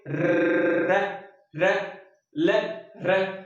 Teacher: रे ध्वनि में क्या होगा मित्रों, कंपन भी होगा और जीभ लुढ़कती हुई प्रतीत होगी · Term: लुंठित या प्रकंपित